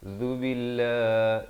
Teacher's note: Zal di hujung lidah. Hujung lidah itu keluar. Zubillah, dan dibacakan dengan nipis.